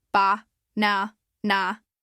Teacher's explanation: Hear how the middle part is a little stronger?